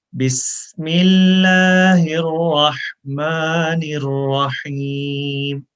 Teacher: जब बिस्मिल्लाह पढ़ते हैं तो सीन में सीटी की आवाज़ है, व्हिसल साउंड है।